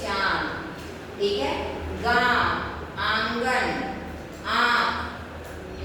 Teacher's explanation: मुंह से भी बोल रहे हैं नाक से भी आवाज आ रही है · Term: अनुनासिक